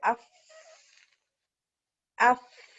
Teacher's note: اس میں ہمس بھی ہوا بھی, اور یہ کمزور حروف میں سے ہے